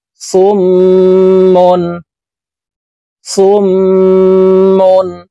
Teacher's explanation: গুন্নাহ করিয়া পড়িতে হয় তো এই সদ তাতিদ ওয়ালা মিমের সাথে নাকের বাঁশি থেকে তিন সেকেন্ড পরিমাণ গুন্নাহ করে ধরে রাখবো